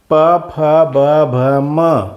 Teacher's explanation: प, फ, ब, भ, म म्हणताना ओठ मिटतं म्हणून त्यांना ओष्ठ वर्ण म्हणायचं.